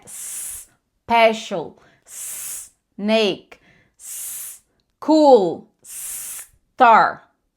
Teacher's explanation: Não pode vibrar no começo. Porque se vibrou é porque você colocou o izinho no começo